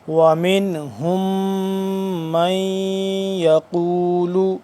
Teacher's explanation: اب نون ساکن ہے لیکن یہاں پہ ہم غنہ نہیں کر سکتے۔